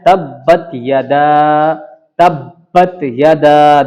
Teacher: تشدید کی وجہ سے اس میں تھوڑا سا سختی کے ساتھ اس کو پڑھنا پڑا